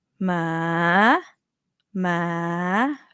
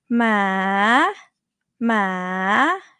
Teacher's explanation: So the reason that you end up doing a rising tone instead of a high tone, because you start low already. So when you go up, it's going to become a rising tone.